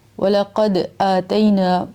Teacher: قد یہاں پہ دال پہ قلقلہ کرنا ہے